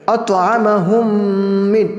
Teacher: میم ساکن کا 1 الف کے برابر گنہ کریں گے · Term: ادغام شفوی